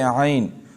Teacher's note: حروف مقطعات میں اگر یائلین آ جائے جیسے عین تو اس کو بھی عام قاعدے کے خلاف ہم لمبا پڑھتے ہیں